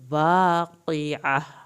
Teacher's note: قاف کو پر کرنا ہے عین کو حلق سے پڑھنا ہے